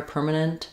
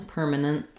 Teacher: if I'm saying it by itself, I will say this T sound. I'll release the air, permanent.